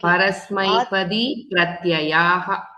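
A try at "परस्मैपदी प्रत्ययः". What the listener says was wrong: Good job.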